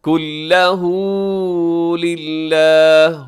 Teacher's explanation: ہو کو لمبا کیجیے گا، الٹا پیش ہے اس کے اوپر، ہا کے اوپر الٹا پیش.